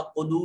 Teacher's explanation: قلو میں واو ساکن ہے، ما قبل مضموم ہے، واو مدہ ہوگی، لمبا کریں گے